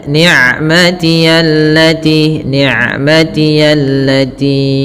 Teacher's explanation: Ain sifatnya bainiah antara syiddah dengan rhawa. Tidak terlalu dialirkan suaranya dan tidak boleh diputus juga tapi tengah-tengah.